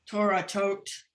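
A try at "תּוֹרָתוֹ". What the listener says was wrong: No, there's no tough at the end. It's Torato.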